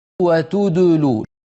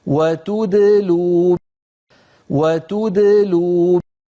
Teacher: When pronouncing a second or a mushaddad letter between two letters with dhamma, don't keep your lips rounded on the second letter.